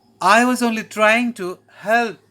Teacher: After glide down and the glide up, we have take off. This also ends with a rise in the voice, like glide up, but any word and syllables before the rise are low.